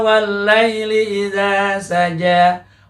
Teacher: alif lamnya ini tidak dibaca jelas tetapi dilebur